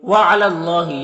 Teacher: اللہ کے لام سے پہلے لام کے اوپر زبر ہے تو اللہ کے لام کو پر پڑھیں گے